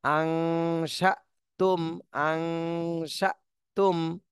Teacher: হামজার উপরে যদি জজম থাকে সেখানে ধাক্কা দিয়ে পড়তে হয় এখানে আমরা ধাক্কা দেবো হালকা